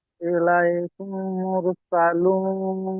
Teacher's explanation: মিম সাকিনের পরে যদি মিম আসে তাহলে মিমকে মিমের সাথে মিলিয়ে গুন্না সহ পড়তে হবে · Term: ইদগামে সাফাবি